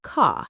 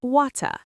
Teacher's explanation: The R at the end of words is often not pronounced. Car sounds like CA. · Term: Nonrodic